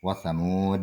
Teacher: Jadi dalnya dibaca mantul, qalqalah kubro.